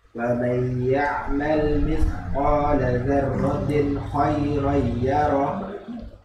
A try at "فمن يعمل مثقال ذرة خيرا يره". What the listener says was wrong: Nah, itu masuk semua, Pak. Idghamnya jadi idgham kamil. Ayo, dibagi separuh-separuh.